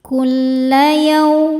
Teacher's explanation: yaw ada harfulin karena waw sukun sebelumnya fathah, dibacanya lembut